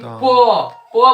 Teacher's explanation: पो में देखिए ओट सटता है, ओट। देखिए जैसे पो बोले ना, जब तक ओट नहीं सटेगा तो तब तक उच्चारण नहीं आएगा। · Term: पवर्ग